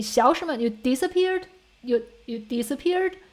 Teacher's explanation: you tend to raise the tone or the pitch of the whole sentence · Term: sentence intonation